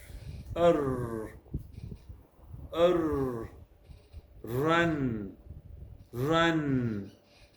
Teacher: the tongue lies relaxed on the bottom of the mouth with only the tip raised towards the alveolar ridge